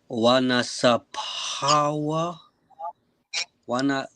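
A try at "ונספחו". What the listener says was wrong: Yeah, so wa nasa pakwa. All right, nasa pakwa. You want to make sure you pronounce that ka. It's still it's not a ha sound. It's still the ka, right? So wa nasa pakwa.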